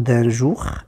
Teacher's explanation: vous avez un D consonne, un E nasal, puis un je, d'accord.